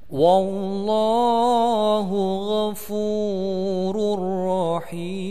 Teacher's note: tanwin bertemu dengan ro, kemudian harus dikasih tasdid, disebut idgham bila gunnah, ditahan tidak mendengung pendek.